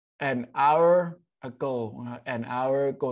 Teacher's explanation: ตัว▁H▁ไม่ออกเสียงก็เป็นเสียงสระอ